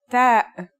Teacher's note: The pronunciation is like the English T, except you should release your breath with a strong burst of air.